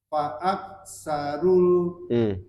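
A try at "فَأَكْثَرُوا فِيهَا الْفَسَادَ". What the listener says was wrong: Bukan. Itu bukan alif lam. Pak, langsung pendek hanya. Fihal Nah, jadi ketika dia diputus begini bacanya. Fa'aktsaru fiha, hanya 2 harokat, al fasada. Jadi kalau digabung fa'aktsaru fihal fasada, langsung masuk.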